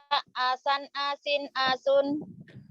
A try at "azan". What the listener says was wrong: Asan, azan. Jadi Z. Ini bukan asan. Azan, Z. Terus, ini sin baru.